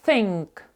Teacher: вимова його в транскрипції буде Як таке приглушене н